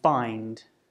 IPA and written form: faɪnd (find)